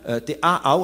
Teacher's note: te aau avec 2 glottales en tahitien